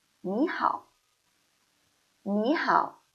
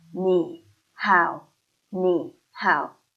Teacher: I pronounce 你 into second tone.